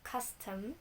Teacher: a stressed syllable followed by unstress syllable